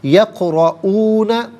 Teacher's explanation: قاف ساکن ہوگا لیکن حرف قلقلہ ہے، آواز لوٹتی بھی محسوس ہونی چاہیے، را پر زبر ہے، را کو پر کر کے پڑھا جائے گا۔